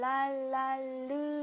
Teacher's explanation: 자, 마지막으로 리을 같은 경우는 랄랄르 이렇게 하게 되면 자, 이렇게 혀끝이 밑잇몸에 달라붙은 그 양쪽 사이로 공기가 이렇게 흘러서 내려온다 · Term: 유음